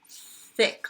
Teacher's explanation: Lots of breath coming through. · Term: unvoiced one